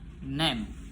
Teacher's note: place of articulationnya itu di alveolar. Manner of articulation itu di nasal. Voicing voice. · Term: voice alveolar nasal